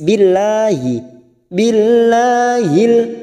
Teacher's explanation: jalalah yang didahului kasrah kita baca tarkik tipis Billahi billahil lanya kita panjangkan dua harakat billahil masuk kata Alif